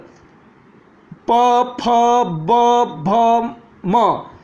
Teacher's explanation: प वर्ग प फ ब भ म, ओष्ठ से उच्चारित होते हैं, ये इसकी ये स्वर्णों का प्रयोग करते हैं तो ओठ एक दूसरे को टच करते हैं, इसलिए ओष्ठ से उच्चारित वर्ण कहते हैं